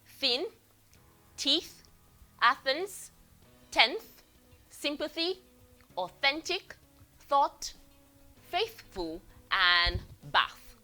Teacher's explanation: Dental in the sense that your tongue had to come in between your two teeth. Upper and the lower, your tongue came in between, so that is why it is called a dental sound. · Upper and the lower, your tongue came in between, so that is why it is called a dental sound. Voiceless dental fricative, made by putting your tongue in between your teeth.